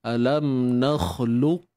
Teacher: sifat takhir yang kita akan dengar pada qaf ni adalah sifat syiddah dia, iaitu tertahannya suara.